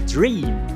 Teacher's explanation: Você tem que tocar os lábios porque o fonema é bilabial.